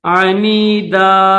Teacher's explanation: ملا کر پڑھیں گے تو عنیدن پڑھیں گے، اسٹاپ کریں گے تو پھر الف پڑھیں گے